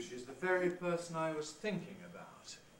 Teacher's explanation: we have high head plus high fall, which gives you what we call a high drop